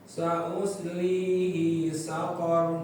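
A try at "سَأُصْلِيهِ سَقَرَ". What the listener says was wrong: I-nya jangan banyak panjang. Ya, tadi kayak misalnya sa'uslihi saqar, ya, hi-nya pendek, di situ bukan panjang. Jadi lebih hati-hati lagi di panjang pendeknya.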